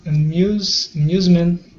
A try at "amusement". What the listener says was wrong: Nice. Amusement. Good job.